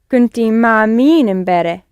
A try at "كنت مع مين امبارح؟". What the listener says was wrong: Yes, good, because the emphasis is on who.